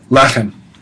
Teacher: lechem and choshek and chesed are referred to as segolits, and they're accented on the first syllable.